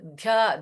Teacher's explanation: Again in dhyatru, dha is Mahaprana.